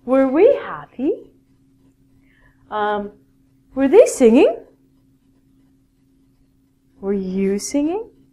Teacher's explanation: at the end of a question in English, it's a rising intonation.